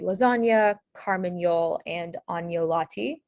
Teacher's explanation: nia, which is the N plus Y sound, pronounced nia